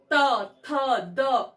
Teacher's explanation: हमारे ऊपरी दांत के पीछे जो अगर जिह्वा हमारी टच करती है और वायु को रोकती है और वहां पर जब वायु रुकती है और फिर जिह्वा नीचे आती है हमारी, तो इन वर्णों का उच्चारण होता है तवर्ग का।